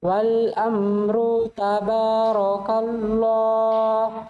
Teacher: Tabaraka tipis, Allahnya tebal.